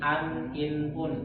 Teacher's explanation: nun sukun atau tanwinnya itu jelas berbunyi an, in, un, tidak boleh dikolkola, tidak boleh disamar. Jadi harus jelas. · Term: izhar